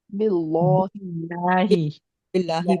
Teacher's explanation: با کی یہ جو کسرہ ہے یہ لام جلالہ کو باریک کر دیتی ہے